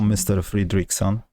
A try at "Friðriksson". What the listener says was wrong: Well, almost. Friðriksson. Yeah, the D is silent.